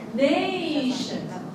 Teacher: Nay is stressed, full vowel production. Ang shun is, hindi mo i-emphasize ang full vowel production kay unstressed man na siya.